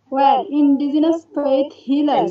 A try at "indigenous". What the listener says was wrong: indigenous সাউন্ডটাকে জ হয় না কি, যা এখানে জেড এর মতো বোঝা যাচ্ছে। তুমি আবার একটু পড়ো।